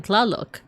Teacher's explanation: You want to try and imagine that the two sounds are just merging together, the T and the L. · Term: the TL sound